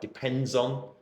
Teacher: When you use a phrase like depends on, I can very clearly hear you linking those words together.